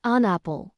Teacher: with the N sliding into the A. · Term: linking sounds